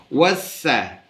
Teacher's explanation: تو ہم پڑھیں گے واو سین زبر وس، سین زبر سا، وس، یہ اس کی جوڑ ہے، اور سین پڑھتے ہوئے وسل ساؤنڈ سیٹی جیسے آواز نکالیں گے